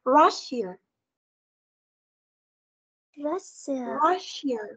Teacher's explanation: Và chúng ta có trọng âm là vào âm đầu tiên. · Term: trọng âm đầu tiên